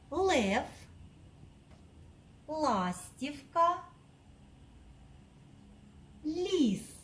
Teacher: під час вимови звука л повітря зустрічає перешкоду язик і піднебіння тому він в нас приголосний і позначається однією рисочкою звук л може вимовляти ствердно як у